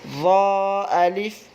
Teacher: دوسرا والا ضا الف ہے یعنی کہ زبان تھوڑی سی نکال کر پھر الف پڑھیں گے